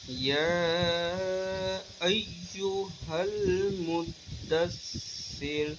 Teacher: یا کو ہم نے لمبا کرنا ہے کیونکہ یہاں پہ مد منفصل کی مد آ گئی، تو اس کو ہم 2.5 الف کے برابر لمبا کر کے کریں گے، ٹھیک ہے۔